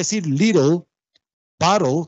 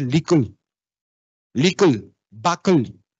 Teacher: hay una tendencia a que la lengua se mueva hacia atrás en el criollo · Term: Disimilación en oclusivas